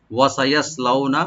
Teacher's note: ওয়া ওপেন থাকবে, সিন open থাকবে, ইয়া ওপেন থাকবে, আর সরটাকে একটু ডিপ করে পড়বো।